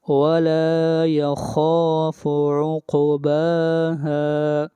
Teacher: قاف کے اوپر قلقلہ اور قاف کو موٹا بھی پڑھا جائے گا ، قاف حروف مستعلیہ میں سے ہے، وَلَا يَخَافُ عُقْبَاهَا، یہ